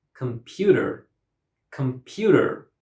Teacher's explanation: The word has 3 syllables and stress is on the second syllable. The second syllable is pronounced louder than the other syllables.